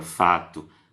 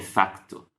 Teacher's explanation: o brasileiro, na palavra fato, não tem o k, e o português europeu tem facto